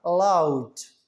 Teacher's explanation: ओ से शुरू हुआ और यू की तरफ मूव कर गया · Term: diphthong